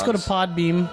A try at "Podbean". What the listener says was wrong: it's bean with an N, like coffee bean.